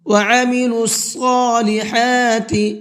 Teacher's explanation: صاد کو منہ بھر کے پڑھیں گے